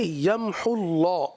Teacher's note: اللہ کے لام کو پر پڑھیں گے. اللہ عز و جل کا لام جب تک پر نہیں پڑھا جائے گا، یاد رکھیے آپ ترتیل پڑھیں، حدر پڑھیں، تدویر پڑھیں، جب بھی آپ قرآن کریم پڑھیں گے تو اللہ عز و جل کے لام کو جب پر پڑھنا چاہیے.